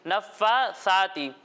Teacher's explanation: سا میں سیٹی کی آواز نہیں آئے گی